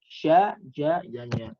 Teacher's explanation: tengah lidah ditekan ke langit-langit atas. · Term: Shin, jim, dan ya